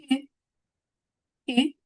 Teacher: c'est une voyelle fermée antérieur arrondie. Position de la langue comme i mais lèvre en avant. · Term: le son U